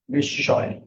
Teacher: দ্বিত্ব plus নাসিক্য হবে, দ্বিত্ব মানে double, নাসিক্য মানে কি চন্দ্রবিন্দু।